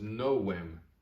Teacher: Remember, this is the Latin letter w, and it does not make the v sound. It makes the w sound. So this is novem.